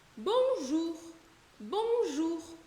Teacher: Esse R do final do bonjour, ele dificilmente vai ser muito vibrado, como o outro R mais característico do francês, né? · um R mais seco, com mais ar passando pela garganta